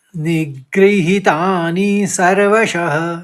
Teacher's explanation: सर्वश में ह करके आप उच्चारण करेंगे